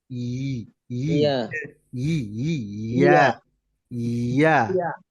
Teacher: ইয়া জিহ্বার মাঝখান উপরের তালুর সাথে চাপ দেয়, একটু ইয়া ঘষা দিয়ে ঘর্ষণ করে ইয়া ইয়াটা আসে।